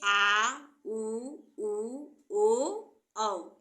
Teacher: बीच का हिस्सा और पीछे का हिस्सा उठता है वह पश्च स्वर कहलाते हैं